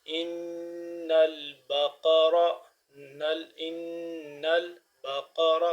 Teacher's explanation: نون مشدد ہونے کی وجہ سے یہاں پہ ہم غنہ کریں گے